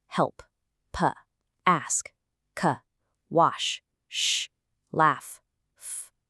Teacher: See, there's no buzz for any of them. These are all quiet sounds. So that e d ending turns into a quiet t sound. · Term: quiet consonants